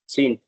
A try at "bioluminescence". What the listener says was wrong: सेंस Sense. सीन नहीं होगा ना सीन होगा तो सीन ही आएगा फिर यहाँ पे